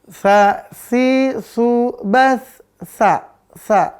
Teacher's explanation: Terbuka dia. Langit-langit dengan lidahnya terbuka. Maka namanya infitah.